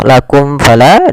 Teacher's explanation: Izhar syafawi yaitu adanya mim mati bertemu dengan huruf hijaiyah atau seluruh huruf hijaiyah selain mim dan da. Karena di sini bertemu fa, maka dinamakan dengan izhar, suara mimnya tidak boleh ditahan.